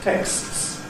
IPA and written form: teksts (texts)